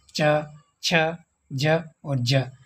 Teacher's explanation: उच्चारण के बाद वाला जो भाग है वह संघर्षी हो जाता है उसको स्पर्श संघर्षी कहते हैं